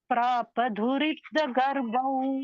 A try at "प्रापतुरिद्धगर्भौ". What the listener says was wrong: துரித்த இல்ல துரித்த முதல்ல த அப்புறம் த துரித்த கர்ப்பௌ प्रापतुरिद्ध गर्भौ ரெண்டு தூ வந்துடுது இன்னொரு வாட்டி சொல்லுங்க முதல்ல